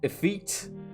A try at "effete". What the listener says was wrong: A feet. That is the source of the confusion. While the end of the word sounds like feet, the beginning is different. It's pronounced IH feet.